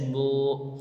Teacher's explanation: واو جس پر جزم ہو اور اس سے پہلے پیش ہو تھوڑا کھینچیں اور معروف پڑھیں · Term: واو مدہ